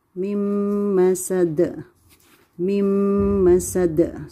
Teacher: But from mim kasra, we'll continue reading to mim shadda. So the nun we're going to skip, and we will read mim. Then again, there is a nasal sound. Mim. Ghunnah.